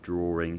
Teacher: a is a vowel in rather starts with a vowel so drawing will acquire that linking r the r sound in the middle